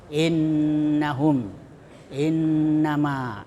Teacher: Nah, itu cara membacanya wajib mendengung. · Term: gunah